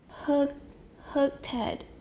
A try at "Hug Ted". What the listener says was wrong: Hurt Ted? Ted. That's voice. We need a voice sound. Hug Ted. Make it longer. Hug Ted.